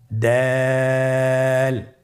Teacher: জিহ্বার আগা সামনের উপরের 2 দাঁতের গোড়ার সঙ্গে লাগিয়ে উচ্চারিত হয়। তাহলে ছবি দেখে একবার চেষ্টা করুন, দাল।